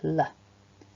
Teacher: The tongue begins by being pressed against the top teeth and it sort of flicks down and outwards when we make that sound